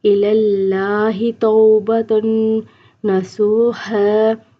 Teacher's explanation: نون جو ہوتا ہے اس پہ غنہ کرنا ہوتا ہے، ناک میں آواز اوپر کی طرف لے جا کے 1 سیکنڈ کے لیے ٹھہرا دیتے ہیں ، اس کو غنہ کہتے ہیں۔ إِلَى اللَّهِ تَوْبَةً نَصُوحًا عَسَىٰ